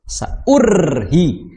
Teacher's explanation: ketika mengucapkan huruf ro itu jangan terlalu digetar-getarkan. Saurhi, tapi ya, getarannya diredam lah, ya, dikurangi, jangan berlebihan.